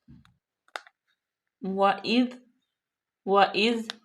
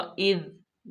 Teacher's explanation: زال جو ہے اس کو نرمی سے پڑھیں گے۔ وَإِذْ، بالکل بھی سیٹی کی آواز نہیں آئے گی۔